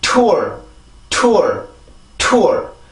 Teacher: 공기를 강하게 만드는 방법은 치조를 맡고 있는 혀의 힘을 더 강하게 해줘서 목에서 올라오던 공기를 한 번 막았다가 그렇게 내보내주는 거예요. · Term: 치조 폐쇄 무성음